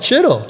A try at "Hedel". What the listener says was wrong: It's not Chittle. You don't pronounce the ch. It's just the h.